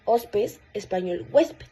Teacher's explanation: la H inicial que ya era muy débil en el latín clásico terminó desapareciendo completamente en español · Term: elisión de la h aspirada